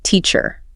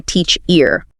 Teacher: You naturally hit teach harder. You don't say teach ear.